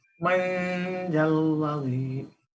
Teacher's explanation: মাং কিন্তু না, এমাং এর মাং না, কিন্তু এটা শব্দটা ভিতরে যাবে, নাকের ভিতরে যাবে, কিন্তু অনুস্বার যেন না হয়ে যায়। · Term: ইখফা